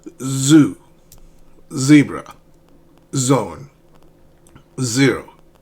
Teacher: This sound is not t is z. So you let air and voice pass through your oral cavity, your mouth.